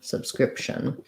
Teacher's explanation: But in subscription, I go to make the P with my lips, subscription. And then I release right into the TION ending, which is the SH sound and a schwa, or just SH and N directly. So it sounds like sub, script, with not much P, and then shun, subscription.